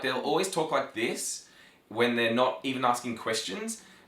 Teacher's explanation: Australians tend to have constant rising intonation even when they're not asking questions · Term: Australian rising intonation